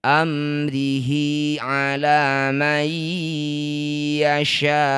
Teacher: Disebut bacaan namanya izhar syafawi. Baca jelas bunyi mim tidak usah didengungkan. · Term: idhar syafawi